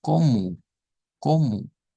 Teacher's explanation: Que termina en O, pero se pronuncia como U.